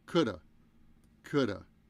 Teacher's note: Could've. But we just leave off the of and we say coulda